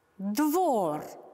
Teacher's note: В ударной позиции мы слышим «о»